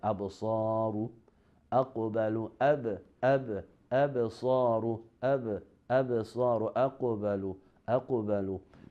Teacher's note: in the Sughraa Qalqalah, when the letter of Qalqalah are in the middle of a word. In this level, the echo is mild, like absaru, aqbalu, absaru, absaru, aqbalu.